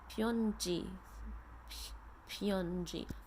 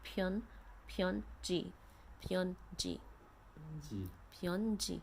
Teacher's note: You have to make that aspirated P sound with a puff of air coming out.